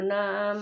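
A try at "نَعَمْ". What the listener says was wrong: Lu kirang panjang mah tapi.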